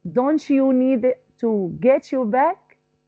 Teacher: get your back to get your back we use sha sound T is converted into sha